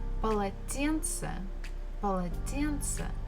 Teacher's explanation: the first two syllables, pa, la, they are not stressed. Тен is stressed and ce is not stressed.